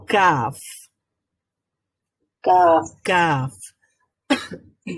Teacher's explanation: নরম অংশটা যেখানে শেষ হয়েছে এবং শক্ত অংশটা যেখানে শুরু হয়েছে, সেই মাঝামাঝি জায়গাতে লেগে উচ্চারিত হবে কাফ · এখানেও আমাদের রুট অফ দ্য টাং অর্থাৎ জিহ্বার যে গোড়া রয়েছে সেটা অন দ্য হার্ড প্যালেট